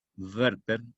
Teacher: La W en alemán pronuncian la labio dental, Werther, no gutural como están ustedes acostumbrados a pronunciar la W en inglés, Werther.